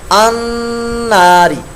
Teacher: نون مشدہ کا غنہ کریں گے اور اس کو 1 الف 2 حرکات کے برابر لمبا کریں گے